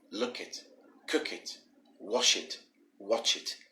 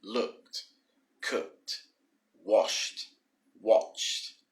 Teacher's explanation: Now, of course, whenever we use a word that ends in ed, the e becomes very silent, and the d makes a sort of t kind of sound, like cooked, like that.